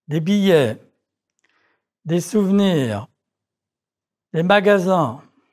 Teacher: the final S of a plural noun is not pronounced